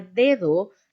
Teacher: lo primero de es oclusivo dental y se representa de mientras que en la segunda dricativa dental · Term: fricativa dental